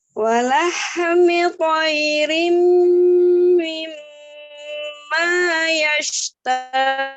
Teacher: mim tasdidnya ada 2 ya. Yang pertama dengan yang kedua gunnahnya sama. 2-3 harokat sama ya.